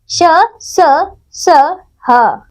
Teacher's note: ऊष्म व्यंजन इनका उच्चारण करते समय मुंह से हवा की रगड़ खाने के कारण ऊष्मा गर्मी पैदा होती है, इसलिए इन्हें ऊष्म व्यंजन कहते हैं।